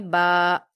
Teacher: با پر الف مدہ ہے، 2 حرکات کھینچیں گے